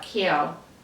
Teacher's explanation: the ow sound becomes more like eo